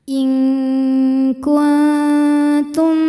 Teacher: Ada hukum ikhfa aqrab sebab nun sukun menghadapi huruf ta. Maka nun sukun ini disamarkan menuju makhraj huruf ta disertai dengung, tapi dengungnya yang ini mas sedikit karena ta makhrajnya dekat dengan nun. · Maka bunyi nunnya dibunyikan samar-samar, siap-siap menuju kaf disertai bunyi dengungan. Dan dengungnya ini besar ya karena kaf makhrajnya jauh dari nun. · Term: ikhfa ab'ad